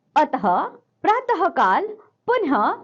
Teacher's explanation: इनका उच्चारण हु की तरह होता है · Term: विसर्ग